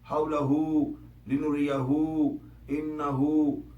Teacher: یہ تینوں جو ہے یہ مد اصلی ہیں اور یہاں پر 2 حرکتوں برابر طوالت اختیار کرنی چاہیے